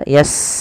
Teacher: Sin punya sifat namanya Hames alirkan nafas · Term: hamas